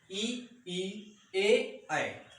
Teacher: अग्र स्वर की अगर बात की जाए तो इसमें आपका ई, ए और ऐ, ये 4 वर्ण आपके अग्र स्वरों के अंतर्गत रखे जाते हैं। इनके उच्चारण में जीभ का अगला भाग कार्य करता है।